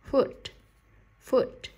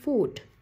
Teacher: Âm U có dấu hai chấm, có nghĩa là âm U kéo dài.